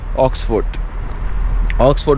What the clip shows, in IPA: ˈɒksfərd